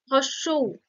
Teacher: জীভের অগ্রভাগটা উঁচুর দিকে উঠে থাকছে সেজন্য এটা উচ্চ